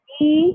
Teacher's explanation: the least amount of distance is when you say e because your tongue is almost stuck to the upper surface of your mouth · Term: high vowel